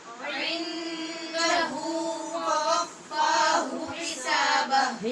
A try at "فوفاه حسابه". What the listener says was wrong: حسابہ نہیں، پہلے ہا ہے پھر ہا ہے. فوفاہ حسابہ.